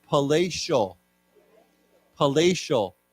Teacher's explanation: With the T has a sh sound to it